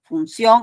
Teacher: Por ejemplo, la palabra función, ¿no? Función, ahí tienes la I, tienes la O, que da la mayor fuerza de voz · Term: diptongo